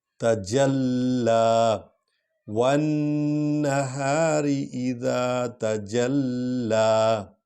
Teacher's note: اذا تجلی تا کو ہلکا پڑھنا ہے، پر نہیں پڑھنا، اور جیم اور لام کو اکٹھے اور لام کو ذرا لمبا پڑھنا ہے کیونکہ اس پر کھڑا زبر ہے